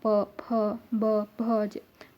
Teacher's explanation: पवर्ग में जब आप बोलोगे तो आपका ओठ बंद होगा, प फ ब भ, आपका ओठ एक दूसरे से टकराएगा, तो इसलिए पवर्ग का उच्चारण स्थान ओष्ठ होता है, ओष्ठ या ओठ होता है।